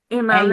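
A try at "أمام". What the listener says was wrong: इमाम नहीं होता आपका। जबर है,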